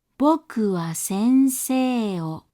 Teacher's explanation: As you can see, the high pitch in boku is higher than the high pitch in sensei. Likewise, the pitch after the downstep in sensei is lower than the pitch after the downstep in boku. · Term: terracing